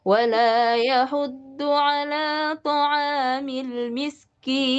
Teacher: sekarang sudah masuk ayat ketiga berarti ujungnya dinaikkan